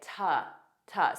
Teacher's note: a very unstressed T but connect it to your next sound